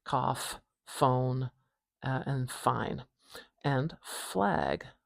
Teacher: We put our top teeth behind our lower lip and push the air out and make a kind of turbulent whispering sound, I guess. And we don't have any vibration at our throat. This is a voiceless sound